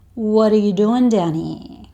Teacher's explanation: he asks the question really fast. So it sounds like he's saying one long word.